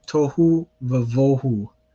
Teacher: So it's a va with a kametz because vohu is one of those words where the stress is placed on the first syllable